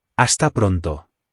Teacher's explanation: Again, the H is silent, so this is pronounced hasta pronto. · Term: silent H